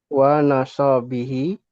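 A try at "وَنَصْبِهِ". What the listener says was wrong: Sotnya sukun wa nasbihi.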